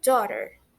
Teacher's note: Mas na verdade a gente não pronuncia. A gente pronuncia como se tivesse só o iniciozinho dó e o finalzinho rá. Então, juntando fica daughter, tá?